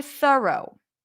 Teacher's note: so the r takes over the vowel